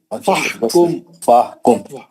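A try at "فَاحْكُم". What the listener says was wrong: फाहुकुम अलिफ नहीं पढ़ रहे, मध्य असली नहीं हो रहा।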